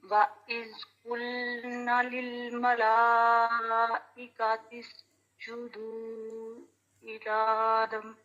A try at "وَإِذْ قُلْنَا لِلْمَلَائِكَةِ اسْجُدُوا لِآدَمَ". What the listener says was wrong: جی، وَإِذْ قُلْنَا، الف مدہ کو انڈرلائن کریں، یہ آپ کا ڈراپ ہو گیا ہے، آپ نے اس کی مقدار پوری نہیں کی. لِلْمَلَائِكَةِ اسْجُدُوا لِآدَمَ، اشبائی فتحہ ہے اس کے اوپر، آلٹرنیٹ ہے الف مدہ کا، تو اس کی بھی مقدار ہے ایک الف.